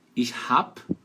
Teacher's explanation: Letra B ali, então, vai ter som de P no verbo haben, então, ich hab, ich hab.